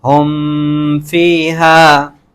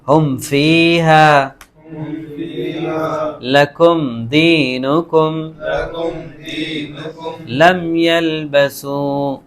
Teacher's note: میم ساکن کے بعد فا آ رہا ہے تو یہاں پر کیا ہوگا؟ اظہار ہوگا. بالکل کلیئر کر کے پڑھیں گے یہاں پر. اچھا، ہم فیہا لکم دینکم لم یلبسوا. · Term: اظہار شفوی